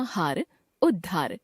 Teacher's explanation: त के बाद ह हो तो त द में और ह ध में परिवर्तित हो जाता है